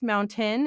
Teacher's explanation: So I pronounce mountain as mountain. I have a glottal stop